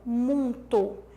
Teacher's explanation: Ele suprimiu o fonema semivocálico I dessa palavra